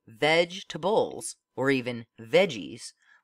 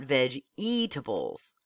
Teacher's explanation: Notice that in spoken English, you say vegetables, or even veggies, leaving out the middle E, not veg-e-tables.